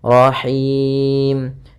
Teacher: ha ini ha kecil dari tengah tenggorokan kita